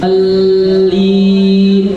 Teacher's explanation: Jadi lamnya tasjid ya. Alli ditahan.